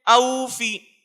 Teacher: حمزہ واو ساکن سے پہلے زبر ہے، اس لیے واوے لین کو نرم آواز کے ساتھ جلدی سے معروف پڑھیں گے، جیسے او فی. فا کے نیچے زیر کی حرکت کو معروف پڑھیں، مجہول آواز سے بچے جلدی پڑھیں، تھوڑا بھی نہ کھینچے، زیر کی آواز نیچے کو جاتی ہے، جیسے او فی.